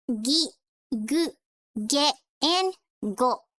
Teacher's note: when you make the G sound you can feel your vocal cords vibrating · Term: voicing